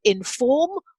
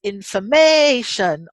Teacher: how the word stress shifts when it's in a word family so inform on the second but information on the third